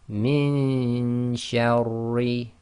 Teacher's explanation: we're going to do the Ghunna with the hiding of the Noon, i.e. getting our tongue ready in the next articulation point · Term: Ikhfaa